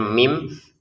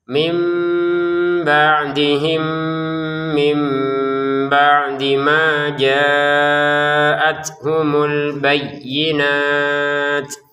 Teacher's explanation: bacanya mim karena dipertemukan dengan bnya dengan samar